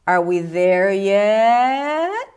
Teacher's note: So at the end there is a quite nice rise up. · From the bottom of your pitch to the top of your pitch.